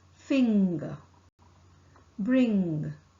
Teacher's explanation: articulated by pressing the back of the tongue against the soft palates the soft palate is lowered and the air is not allowed